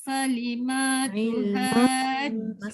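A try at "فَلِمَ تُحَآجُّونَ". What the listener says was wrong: Masih tak dengung, masih ma tu panjang.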